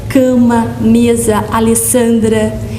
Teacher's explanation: São palavras fortes, tônicas, na penúltima sílaba. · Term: paroxítonas